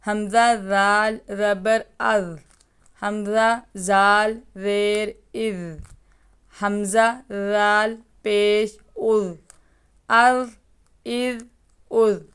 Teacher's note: رال میں سیٹی کی آواز نہیں آئے گی، اس کو باریکی سے پڑھیں گے۔